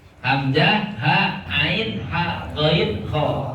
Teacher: kha jeung ghain urang luhurna di tenggorokan bagian atas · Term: makhrajul halqi